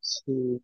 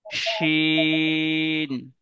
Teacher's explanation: একটি নোক্তা আছে আর একটি নোক্তা নেই। যেটা নোক্তা নেই তার আওয়াজটা একটু পাতলা হবে, আর যেটা নোক্তা আছে তার আওয়াজটা একটু মোটা হবে